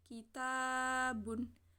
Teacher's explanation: Adapun cara membacanya yaitu harus panjang 2 harokat yang disebut dengan 1 alif. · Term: mad tabi'i